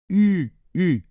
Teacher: ce n'est pas un ou c'est un petit peu comme un ou et en même temps vous essayez de faire un i donc ça nous fait u u d'accord donc chirur rure rure